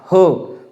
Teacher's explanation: उच्चार करताना फुफ्फुसातील हवा जोरात बाहेर फेकली जाते, त्याला महाप्राण म्हणतात.